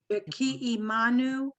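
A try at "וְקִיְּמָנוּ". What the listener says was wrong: Not E. Vikiy. Yeah. Just hear the yeah.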